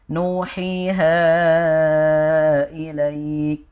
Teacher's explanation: ilaik itu harusnya dibacanya minimal dua harakat. Jadi, ilaik ini kan namanya mad lin ya.